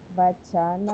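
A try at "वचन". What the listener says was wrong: Вы не удлиняйте вачана. Гласные. Гласные, если там вач, то не удлиняйте, не говорите вач. У вас вы растягиваете, как бы распеваете, а получается долгое.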